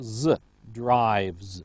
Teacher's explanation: the base form ends with the sound v, which is voiced. So we have a voiced ending, z,